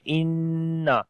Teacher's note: نون کے اوپر شد ہے، غنہ کریں گے اور لمبا بھی کریں گے